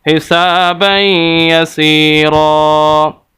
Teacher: نیچے زیر آ جائے پھر را باریک پڑھا جاتا ہے، وگرنہ زبر اور پیش کی صورت میں را موٹا پڑھا جاتا ہے، تو یہاں پر زبر ہے تو اس وجہ سے را کو موٹا پڑھیں گے